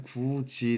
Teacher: 디귿이 일단 자리를 옮기긴 했지만 디귿이 지읒으로 바뀌었습니다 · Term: 교체